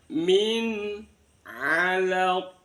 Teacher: Jelas karena bertemu dengan huruf kerongkongan yaitu huruf ain. Min disempurnakan bunyi n-nya sampai sempurna bunyi n, tapi enggak didengungkan, dijelaskan. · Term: idhar halqi